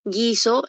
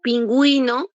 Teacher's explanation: guiso la u no suena solamente está sonando la g y la i en cambio pingüino ahí date cuenta pinguino entonces ahí Si suena la u y la i